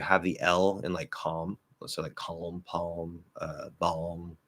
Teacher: it used to be the standard thing to have the L in like calm